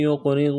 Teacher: قاف ساکن ہے، قلقلہ کریں گے قاف پر